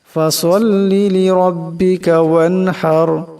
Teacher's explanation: ওয়ানহার, এখানে হা, বড় হা গলা থেকে চাপ দিয়ে আওয়াজটা বাহির করতে হবে। রা সাকিন, আওয়াজটা মোটা করে পড়তে হবে